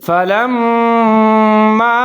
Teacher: آگے ہے فلما اضاءت، اب یہاں میم مشدد ہے، اس کے اوپر شد ہے، تو یہاں آپ نے غنہ کرنا ہے، یعنی کہ آواز کو ناک میں لے جانا ہے۔